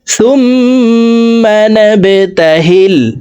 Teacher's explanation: সুম ওয়াজিব গুন্না 3 second পরিমাণ গুন্না করে পড়ব। সুম্মা নাবতাহিল, বা কলকলার হরফ নিচের দিকে ধাবিত করে ধাক্কা দিয়ে উচ্চারণ করব।